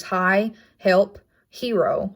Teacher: this sound all right this fricative is the lower case h it is a glottal placement and it's not voiced